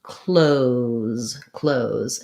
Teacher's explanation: They're often going to just leave this th off and do it more like close, close, in which case it just sounds like close with a Z sound. We don't really need that E there, but I'm putting that there to help you recognize that the O is a true O sound.